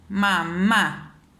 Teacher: al pronunciar mamá, la segunda sílaba es la que recae el acento tónico, es donde yo elevo más mi voz